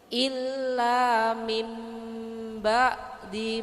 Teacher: Jadi merubah suara nun atau tanwin menjadi suara mim. Jadi Bu mingkem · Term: Iklab